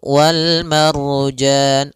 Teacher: ada ra sebelumnya fathah, maka dia ra tebal. Kemudian pada lafal jan ada bacaan mad arid lis sukun, yaitu mad yang kita baca dengan bacaan tebal.